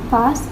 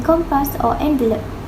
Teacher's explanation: the p is aspirated in past but not in compass or envelope